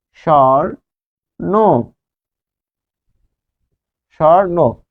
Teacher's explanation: যখন বফলা বসবে দন্ত স এর সাথে, তখন সেটি তালব্য স উচ্চারণ হবে